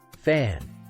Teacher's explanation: sound place your hand on your throat and say fan and you'll feel no vibration at all for the F